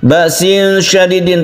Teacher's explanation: tanwin bertemu dengan shin, kita baca ikhfa, kita panjangkan ini, kita dengungkan